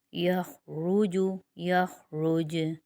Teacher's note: جیم ساکن ہو جائے گا وقف کی صورت میں، اس لیے جیم پر قلقلہ ہوگا۔